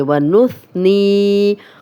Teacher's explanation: یا مدہ ہے، جزم والی یا، نون پہ زیر، 2 حرکات لمبا کریں گے